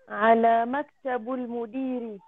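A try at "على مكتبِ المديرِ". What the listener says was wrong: Very good, meaning?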